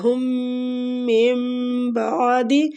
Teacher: ہم من بعد، میم مشدد پہ غنہ کریں گے، نون ساکنہ کے بعد با آ رہا ہے تو ادھر ہم نے اقلاب کرنا ہے، نون ساکنہ کو ہم نے بدل دینا ہے میم کے ساتھ